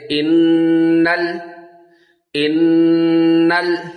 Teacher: اب یہاں پہ بھی دیکھیں، حمزہ نون زیر ان، نون لام زبر نل، ہم الف نہیں پڑھا جائے گا، نون کو لام کے ساتھ ملائیں گے